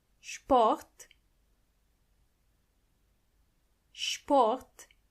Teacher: when you see an S before a p you have to automatically pronounce the S as sh